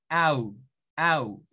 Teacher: un diptongo del inglés es el sonido au, o sea, literalmente una A con una U.